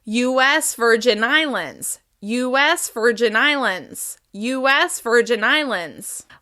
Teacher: we're going to stress the S in U.S. as well as the first syllable of the last word, islands.